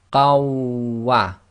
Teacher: So we're going to do an assimilation. So we drop the noon sakin in the fathatain, so we end up with qa, which then is going to join to the waw. So we read the waw as if it's got shadda.